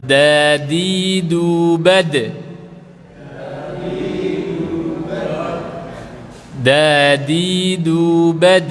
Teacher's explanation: itu ujung lidah nempel gusi atau sebagiannya nempel gigi seri ya. Kalau yang bahasa Indonesia itu agak naik ke atas, nempelnya ke langit-langit atas ya. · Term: huruf da